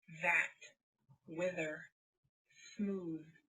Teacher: you have the voiced th, which means you also use your vocal cords, which you don't in the unvoiced.